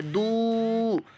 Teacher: یہ واو مدہ ہے، اس کو ہم لمبا کریں گے، کھینچ کر پڑھیں گے